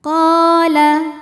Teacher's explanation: Sebab ada alif yang sebelumnya didahului baris fathah. Maka huruf qaf kita panjangkan dua harakat saja. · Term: mad thabi'i dzahiri